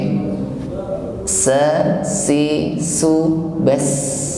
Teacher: Huruf sin tampak jelas hamasnya, nafas yang mengalir.